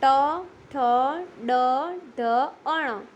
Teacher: જે વર્ણોનું ઉચ્ચારણ કરતી વખતે જીભ મોઢાના તાળવાનો સ્પર્શ કરવો પડે તેને મૂર્ધન્ય વર્ણો કહે છે